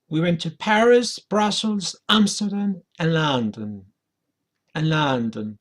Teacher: So you can see the intonation goes down.